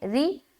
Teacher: آگے ولل مشرکین، ولل، واو زبر وا، لام لام زبر لل، ولل، مش، میم شین پیش، مش، را زیر ری، را کو باریک رکھنی ہے